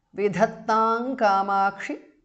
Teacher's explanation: E is short there. Vidhattang Kamakshi because of Sandhi. Anuswara changes to Nga there.